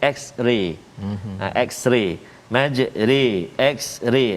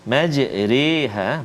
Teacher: sempurna baris atas tak, sempurna baris bawah pun tidak, majra majri tak, di tengah-tengah tu majri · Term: imalah